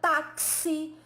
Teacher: ao pronunciar a palavra táxi, né, esse X escrito na pronúncia, né, ele tem aquele som que é representado quase como que fosse um KS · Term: dífono